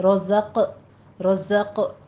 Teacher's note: زائے کی آواز کو آپ نے سیٹی کے ساتھ ادا کرنا ہے، قوی آواز کے ساتھ۔ رزق، رزق، قوف کے اوپر قلقلہ کریں گے، قوف پر بھی پڑھا جائے گا۔